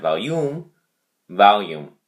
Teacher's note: the emphasis on the first syllable